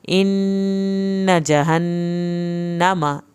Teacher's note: इन्ना जहन्नम, नून और मीम की शद कुरान में सबसे ज़्यादा देर लगाई जाती है। नून और मीम की शद पे यहाँ पे एक अलिफ के बराबर देर लगेगी।